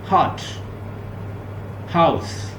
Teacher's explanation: ग्लॉटल ये गले से जो प्रोड्यूस होती है। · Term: ग्लॉटल साउंड